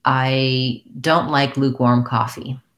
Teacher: well i'm not gonna want it to sound like lukewarm lukewarm i need to be able to hear that warm clearly as well so i would have a little bit of stress on both · In that sentence, I stressed luke, lukewarm. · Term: primary stress